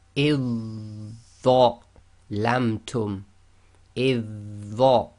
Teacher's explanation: So we ignore the dhal completely, join directly to the dha.